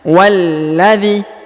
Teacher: huruf wa langsung ke huruf lam yang tasdid dan ditahan dan ditekannya